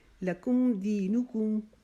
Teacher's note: لکم دی کو 1 الف جتنا لمبا کریں گے